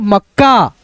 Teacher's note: शुरुआत वाला आधा क है उसको इस प्रकार से पढ़ा जाएगा कि उसमें अ का ध्वनि का साउंड बिल्कुल ना आए। नहीं तो आएगा उच्चारण का साउंड यानी अ का साउंड तो गलत हो जाएगा।